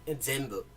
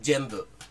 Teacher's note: Yeah, the Korean has the word zenbu for everything, but it's pronounced jombu, or in some parts of Korea, zombu. And so that Z kind of sound, that Z, zenbu, is actually hard for a lot of Koreans to pronounce. So he said jembu.